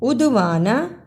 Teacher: عدوانہ دال پہ قلقلہ، نون کو جلدی پڑھنا